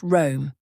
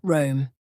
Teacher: the proper pronunciation is just Rome with a short flat o sound